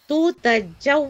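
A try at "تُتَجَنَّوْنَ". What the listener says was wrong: Ada nun di ujung di. Mana nun? Nunnya mana? Tutajannauna.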